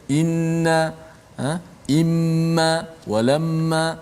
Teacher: Nun yang ada sabdu dekat atasnya, mim yang ada sabdu dekat atasnya, yang mana kita kena baca dengan mendengungkan, menjelaskan dengungnya, memanjangkan suara dengung itu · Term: wajib ghunnah